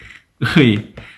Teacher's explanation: If you were to separate this into two, it would be U and E. But if you were to say it fast, it becomes one vowel.